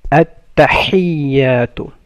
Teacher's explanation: بسم الله الرحمن تسبيح فور سجدة سبحان ح سبحان ربي الراف الموت ربي سبحان ربي الأعلى عين from mid of the throat أعلى سبحان ربي الأعلى بسم الله الرحمن الرحيم تشهد part 1 التحيات ح comes from mid of the throat التحيات and يا has the شدة so you make it double